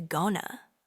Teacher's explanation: Native speakers often reduce going to to gona.